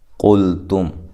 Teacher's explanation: قاف کو موٹا، لام کو ہلانا نہیں ہے، تا کو باریک، میم ساکنہ کا اظہار ہے، یہاں غنہ نہیں کریں گے۔